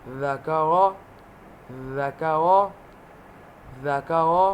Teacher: مثال کے طور پر دین، دین، دین، اوپر والے دانتوں کی جڑ سے۔ زال زبان کی نوک دانتوں کے کنارے سے